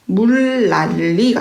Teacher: 앞에 나오는 리을 때문에 뒤에 나오는 요 니은이 다시 또 리을로 바뀌어야 되는 거예요. 그러니까 유음화가 두 번이 일어나야 되는 거죠.